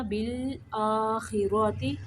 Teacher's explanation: بال لام کو قلقلہ نہیں کرنا